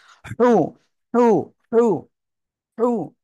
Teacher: গলাটা চেপে মুখ দিয়ে হালকা বাতাস বের করে উচ্চারণ করতে হবে